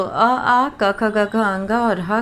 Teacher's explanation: अ, आ, क, ख, ग, घ, अंग और ह का उच्चारण जो है वो कंठ से होता है।